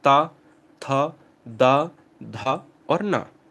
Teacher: जिनका उच्चारण ऊपर के दांतों पर जीभ लगाने से होता है